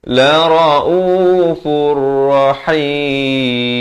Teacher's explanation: Daripada lara'ufun, fin fun. Datang ra masuk tanpa dengung. Idgham bila gunnah.